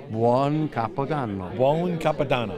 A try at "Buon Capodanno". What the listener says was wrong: Buon. Not bone. Buon Capodanno.